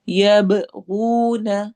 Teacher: یبغون با پہ قلقلہ ہوگا، غو پہ واو مدہ ہوگی.